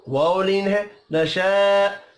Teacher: نشاء الف کے اوپر بڑی مد ہے 5 الف کے برابر کھینچ کر پڑھیں گے